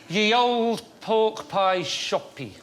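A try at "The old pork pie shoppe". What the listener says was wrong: Oh, no. It's not... That's not pronounced ye. It's pronounced... No, you said it. It's the.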